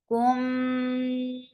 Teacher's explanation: Kha, la, kum, for the circular lips. And this is idgham shafawi. You are merging in this sound of meme into this sound of meme.